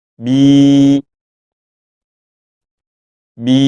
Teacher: huruf yang berharakat kasrah diikuti ya yang tidak ada harakatnya atau yang disebut dengan Ya Sukun maka dibaca panjang dua harakat